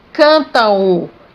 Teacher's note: Esse M não me mostra que a vogal A é uma vogal nasal, não. Ela não está nasalizando, ela representa o som U. Cantam. Então eu tenho a vogal A e a semivogal U, o M, representando o som U.